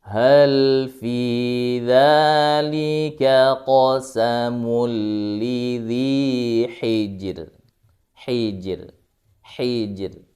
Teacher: Karena sebelum huruf ra sukun, sebelumnya kasrah, maka harus dibaca tipis. Memang hukumnya dia harus dibaca tipis.